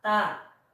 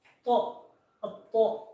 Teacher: ta itu sifatnya istifal atau merendah ya, ta. Kalau misalkan to yaitu isti'la, yaitu terangkat